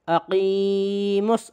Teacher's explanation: یہ جو لام ہے صاد سے پہلے جو لام ہے یہ والا ختم، ڈائریکٹ صاد پہ تشدید ہے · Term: لام تعریف کا ادغام